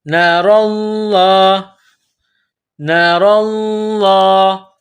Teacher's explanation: لفظ اللہ کے نام سے پہلے زبر ہے تو لفظ اللہ کے نام کو موٹا کرنا ہے،